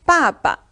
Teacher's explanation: The first character ba is in the fourth tone, ba. But the second one is in the neutral tone or the light tone. We call in Chinese 轻 声.